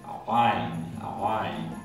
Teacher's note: Se articula con la parte más baja de la garganta. Si fuéramos a hacer una comparación, podríamos decir que es como una letra G fricativa, no oclusiva, porque hay G, hay G y hay G, y una sería oclusiva y la otra sería fricativa. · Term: sonido ain